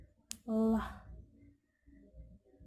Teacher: The place of articulation is alveolar. The manner of articulation is lateral. L sound include voice.